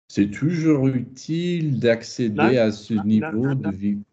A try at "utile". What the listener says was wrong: Toujours utile. Yeah, careful, don't get toujours to kind of hide it. Toujours utile, yeah.